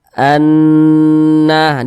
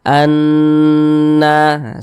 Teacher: bertasydidnya ini hukumnya ghunah musyaddadah seperti itu karena dia ghunah maka cara membacanya itu diunahkan jadi suaranya itu kita tahan kita tahan kita panjangkan sejenak Anna di bagian annya itu kita tahan kita panjangkan sebentar annaah